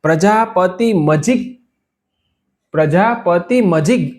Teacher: એ ગકાર છે એ કંઠથી નીકળે એટલે ત્યાં કંઠમાં અડી રહેશે છૂટશે નહીં · ગ બોલતી વખતે તમારી જીભ કંઠમાં અડેલી રહી જશે. જેમ તકાર વખતે દાંતને અડેલી જીભ રહેતી હતી, ગકાર છે એ કંઠથી નીકળે, એટલે ત્યાં કંઠમાં અડી રહેશે, છૂટશે નહીં.